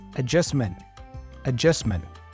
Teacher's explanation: she pronounces that t as a stop T